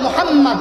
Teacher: মুহাম্মদ বলতে দুইবার ঠোঁট মিলে কিনা একটু লক্ষ্য করেন